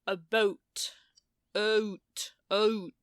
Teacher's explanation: we call it Canadian raising because Americans start down in AH Canadian start up in uh